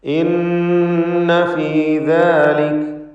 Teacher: നൂൻ മുഷദ്ദദയെ മണിക്കണം. ഷദ്ദുള്ള നൂനിനെ ഗുന്നത്ത് ചെയ്ത് മണിച്ചുകൊണ്ട് ഉച്ചരിക്കുക.